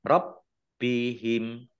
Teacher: Rabbihim, baknya dibaca double, ada tasdidnya, ya ditekan. Rabbihim. Nah, himnya wakof dan dibaca pendek, tidak ada tanda panjangnya.